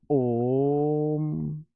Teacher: पुलुत स्वर पुलुत जिसमें तीन गुना समय लगे